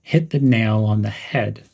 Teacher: When you're saying this, emphasize the words nail and head.